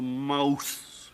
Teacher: the tongue became tired of holding the long ooh sound it began to waver and wobble instead of saying moose s of M and it dropped down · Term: Great Vowel Shift